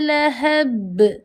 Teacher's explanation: bila di hujung ayat kita nak wakafkan dia maka sukunah ya. Maka jadilah qalqalah lantunan